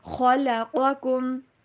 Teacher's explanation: خوا اور قاف دونوں کو موٹا کر کے پڑھیں گے